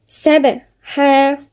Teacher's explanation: والسابحات سبحا، في قلقلة عند الباء، الصفة تبع ايه اللي هو الساكن، الباء الساكنة صفة القلقلة